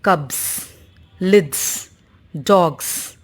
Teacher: And it is realized as z if uh it is preceded by a voiced sound